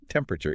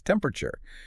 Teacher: You squash the middle right out of it bending the word in half and you lean heavily into that first syllable. It becomes a rhythmic bounce. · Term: disappearing syllables